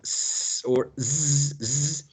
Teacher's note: Entre la lengua y el espacio que deja con el alveolar ridge, okay? So the friction is caused by the tongue being raised up against the alveolar ridge.